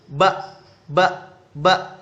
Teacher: huruf ba ini yaitu yang pertama keluar daripada bunyi bilabial dan oral · ketika ba, mulut kita sering bersentuhan dan keluar daripada mulut, maka disebut bilabial dan oral atau keluar daripada 2 bibir dan mulut.